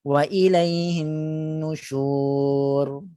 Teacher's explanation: ketika ra itu diwakafkan tidak ada muncung. Muncung hanya pada shin yang berbaris dhammah.